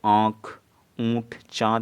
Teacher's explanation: अनुनासिक स्वर ध्वनियाँ होती हैं जिनका उच्चारण मुंह और नाक की सहायता से किया जाता है। ठीक है, अनुनासिक के उच्चारण में मुंह से अधिक एवं नाक से कम जो क्या सांस निकलती है।